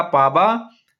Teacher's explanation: बघेली बोली में अवधी बोली के व के स्थान पर ब का प्रयोग अधिक पाया जाता है